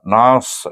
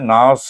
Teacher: nas dengan tebal bunyinya, nas, huruf sad itu huruf isti'la